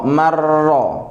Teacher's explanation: Berarti nunnya, kalau idgham nunnya masuk kepada ro, berarti nunnya hilang.